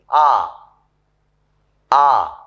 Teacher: the part of the tongue between the center and the back is raised. It is raised just above the open position.